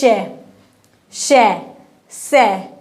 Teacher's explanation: वायु जो है मुख से घर्षण कर रही है, रगड़ खा रही है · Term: ऊष्म या संघर्षी व्यंजन